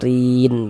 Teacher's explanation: Rin dibaca panjang. Ini namanya mad arid li sukun. Namun pada awalnya namanya adalah mad tabi'i.